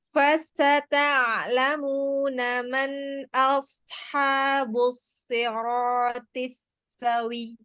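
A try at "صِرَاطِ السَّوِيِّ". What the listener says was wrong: Tapi jangan sawi. Tapi jangan wi-nya jangan panjang. Tadi itu masih wi-nya panjang. Jadi memang WIYY, tapi bukan dipanjangkan.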